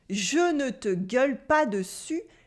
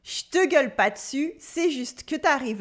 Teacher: in fast spoken French, the ne gets dropped easily and we eat a ton of letters